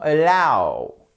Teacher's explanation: Vous avez votre accent tonique qui est sur la seconde syllabe et là le a, hop, il est prononcé comme un e atténué.